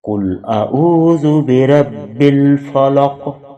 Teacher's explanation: اختتام آیت کا قوف پہ ہو رہا ہے، حروف قلقلہ میں سے ہے، یہاں بھی قلقلہ کریں گے